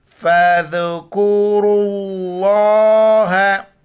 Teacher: پیش نہیں ہے، اس آخر میں را پر پیش ہے تو اس را کے پیش کی وجہ سے لفظ اللہ کو موٹا پڑھیں گے